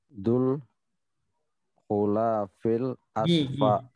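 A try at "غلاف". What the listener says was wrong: Gilafi. Gi bacanya bukan go. Gi.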